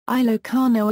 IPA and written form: iːloʊˈkɑːnoʊ (Ilocano)